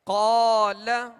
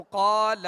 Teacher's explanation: قال، اب اس کو قال، لام کو نہیں کھینچیں گے، ٹھیک ہے؟ لام پر زبر ہے تو اسے بغیر کھینچے ادا کریں گے، اور قاف کو ہم نے دراز اس لیے کیا کہ قاف کے ساتھ الف مدہ ہے.